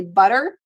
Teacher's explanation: this flap t which is so characteristic of American English